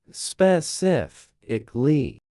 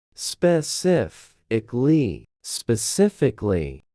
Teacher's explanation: The stress lands on the second syllable sif.